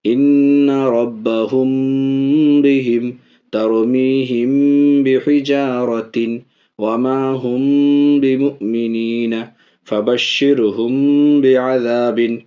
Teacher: دوسرا اخفاء شفوی، میم ساکن کے بعد با آئے تو ناک میں آواز چھپا کے پڑھیں گے، اخفاء کے ساتھ غنہ بھی ہوگا